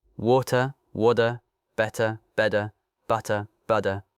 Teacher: in casual American English, that middle T becomes something closer to a D sound.